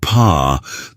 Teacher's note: When you say p, there's a little puff of air. That's voiceless.